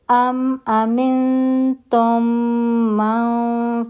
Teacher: मीम साकिन मीम मुतहरिक में मर्ज हो गया। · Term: इदगाम शफवी